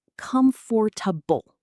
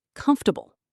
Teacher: >> People think it's comfortable, four syllables, but really, it's often said more like comfortable, three syllables, kind of squished together